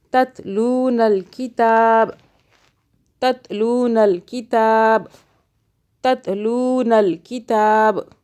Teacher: لو ہم لام کو کھینچ رہے کیونکہ اس کے آگے واو ساکن ہے۔ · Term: مدہ